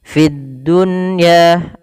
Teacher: Fid dunya ada di sini alif lam, kita namakan dengan alif lam syamsiyah, yaitu alif lam yang tertulis tapi tidak dibaca lamnya, langsung ke huruf dal dan dia ditasydidkan